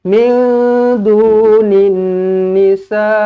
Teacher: Sebab ini adalah mad wajib muttasil. Mad wajib muttasil apabila kita berhenti, kita kena baca dengan 6 harakat.